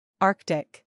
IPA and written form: ˈɑrk tɪk (Arctic)